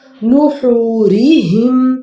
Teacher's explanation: ہا حلق سے ادا کریں گے